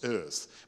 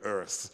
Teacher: the British, they don't voice the R sound often, it's earth.